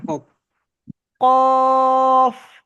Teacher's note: কফ, লাস্টে গিয়ে বাতাস বের হয়